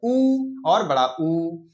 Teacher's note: ये दोनों ही स्वर हमारे ओष्ठ से निकलते हैं, इसलिए इनको ओष्ठ स्वर कहते हैं